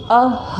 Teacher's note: विसर्ग जो होता है उसका उच्चारण स्थान कंठ से होता है क्योंकि अह बोलते हैं, ठीक है।